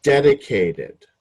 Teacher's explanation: so dedicated again the accent is on the first syllable